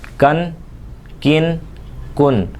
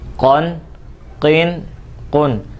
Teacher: یہ جو کاف ہوتا ہے یہ زبان کی جڑ اور تالو کے سخت حصے سے ادا ہوتا ہے، جبکہ یہ جو قاف ہے یہ زبان کی جڑ اور تالو کے نرم حصے سے ادا ہوتا ہے۔ جب آپ اس کو پڑھیں گے تو انشاءاللہ اسی طریقے سے پڑھیں کہ زبان جو ہے وہ تالو کے نرم حصے پہ لگے، اور جب کاف پڑے تو زبان کا جو جڑ ہے وہ تالو کے سخت حصے پر لگے، تو اس کی آواز بالکل صحیح نکلے گی۔